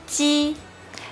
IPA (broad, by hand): tɕ